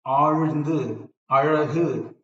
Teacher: you can notice your tongue is slightly rolling back. That's a retroflex we call.